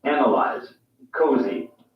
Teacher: the s is voiced in other words it makes a z sound